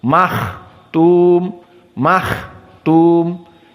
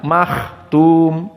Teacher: Maka di sini kha sukun harus dikeluarkan nafas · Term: hams